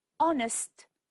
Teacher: honest the H is silent